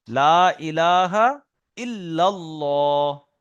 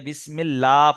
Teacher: লাম মুশাদ্দাদের পূর্বে যদি জবার অথবা পেশ থাকে তাহলে আল্লাহর লাম পুর হবে। আর যদি আল্লাহর লামের আগে জের থাকে তাহলে আল্লাহর লামটা বারিক হবে। এখন বারিক মানে হলো লা আর পুর মানে হলো ল।